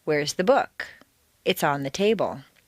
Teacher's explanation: the first is stressed on the most common everyday word book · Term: normal intonation